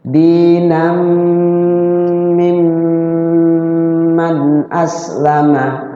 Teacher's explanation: Nah, mim ketemu mim, idgham mimi. Cara bacanya ya di mim yang keduanya itu ditahan juga, ada jeda, ada waktu, jangan terburu-buru.